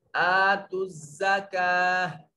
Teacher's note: उसकी ता जो है वो वक्फ की हालत में हा में बदल जाएगी